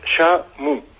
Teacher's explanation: O en Portugal, cando é átono, cando non ten forza, sempre se pronuncia como u. Por tanto, temos xamu.